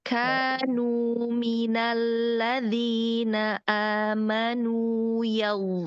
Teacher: Karena di kanu, nunya ada mad tabi'i. Jadi harus 2 harokat.